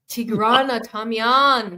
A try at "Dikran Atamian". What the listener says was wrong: No, you added the Tigran. Actually, that's the real name. I was saying Dikran Atamian, but it's an Americanization of the Tigran Adamian with like a D.